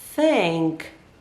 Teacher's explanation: pay attention to where my tongue is. It's in between my teeth. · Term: TH sound